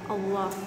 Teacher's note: hukum bacanya tafkhim, dibaca tebal